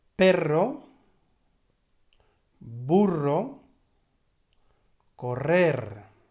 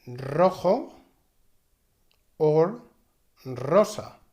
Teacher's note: Hard R has this rolling sound